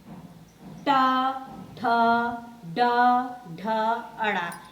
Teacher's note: ये हमारे मूर्धा या मूर्धन्य द्वारा बोले जाते हैं